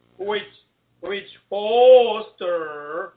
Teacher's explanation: you're pronouncing that WH like it's HW